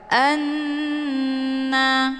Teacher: Hukum bacaan ghunnah musyaddadah dibacanya sambil didengungkan.